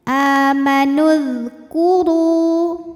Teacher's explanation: Sukun bertemu sukun tidak bisa dibaca sehingga sukun pertama dilepaskan ya. Amanul, langsung ke dzal, dzalnya jangan mantul ya. Ini dialirkan suaranya. · Huruf ra dibunyikan secara tafkhim karena ra berbaris dhammah, maka dibacanya tebal. Ru mad tabi'i dhahiri karena ada waw sukun didahului baris dhammah ya, maka huruf ra panjang 2 harokat.